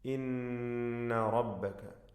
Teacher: ഇന്ന റബ്ബക നൂൻ മുഷദ്ദദ ഷദ്ദ നൽകപ്പെട്ട നൂനിനെ മണിക്കണം